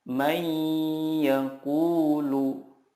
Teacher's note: Idgham bila gunnah adalah nun sukun atau tanwin bertemu dengan huruf ya, nun, mim, atau waw. Cara membacanya adalah meleburkan nun sukun ke huruf berikutnya dan disertai gunnah yang dipanjangkan 2-3 harokat. Contohnya, nun sukun bertemu ya, may yaqulu.